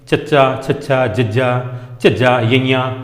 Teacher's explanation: ਤਾਲਵੀ ਵਿਅੰਜਨ ਧੁਨੀਆਂ ਦੇ ਉਚਾਰਨ ਵੇਲੇ ਜੀਭ ਦਾ ਵਿਚਕਾਰਲਾ ਹਿੱਸਾ ਸਖ ਤਾਲੂ ਨਾਲ ਸਪਰਸ ਕਰਦਾ ਹੈ